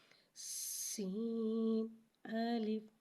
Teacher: سین کو ایک الف یعنی 3 مقدار کھینچے پڑھیں گے، سین میں سیٹی کو ظاہر کریں گے، پہلے سیٹی آئے گی، اور سین کو ایک الف یعنی 3 مقدار کھینچے پڑھیں گے اور الف کو بغیر کھینچے پڑھیں گے اور الگ الگ پڑھیں گے۔